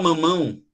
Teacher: esse som de m mamão além de ele sair pela boca ele também sai pelo nariz